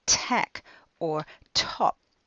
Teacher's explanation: At the beginning of a word, most native speakers add a tiny little puff of air called aspiration. So if you were to put a hand in front of their mouth when they said tack or top, you would feel some air.